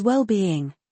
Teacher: It is well-being with stress on both parts.